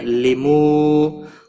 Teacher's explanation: واو مدہ ہے, ایک الف کے برابر کھینچ کر پڑھیں گے